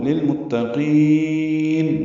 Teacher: لتذکرۃ للمتقین، لل میں اظہار قمری ہے، میم کو تا سے ملانا ہے. تا باریک ہے، قاف پر ہے، موٹا پڑھتے ہوئے لمبا کریں گے قاف کو. للمتقین نون ساکن پہ اظہار ہے.